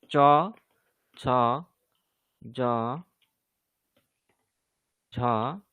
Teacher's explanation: চ ছ জ ঝ এগুলোর হচ্ছে উচ্চারণ স্থান তালু